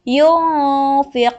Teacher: Nah, apabila nun sukun atau tanwin bertemu dari salah satu ini, maka dibacanya samar-samar. Jadi nun matinya, nun sukunnya atau tanwinnya tidak dibaca dengan jelas. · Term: ikhfa